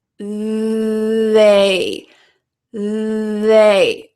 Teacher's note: these words have some vibration when we say the th it's not just air it's your voice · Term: TH sound